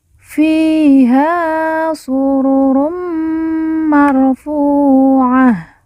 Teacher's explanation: Ta marbutah di ujung karena waqaf atau berhenti, ta marbutah berubah menjadi ha sukun atau ha mati.